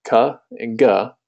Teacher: the back of your tongue is probably pressed up against the back of your mouth it makes a cut and the gut two very distinct sound